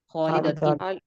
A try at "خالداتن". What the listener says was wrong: اچھا یہاں پہ پورا ادا کرتے ہیں تاکہ وہ دو زیر کی آواز بھی آئے نا. خالداتن.